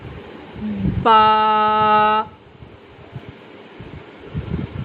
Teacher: بند ہونٹوں کے گیلے حصے سے ادا ہوتی ہے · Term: حروف شفویہ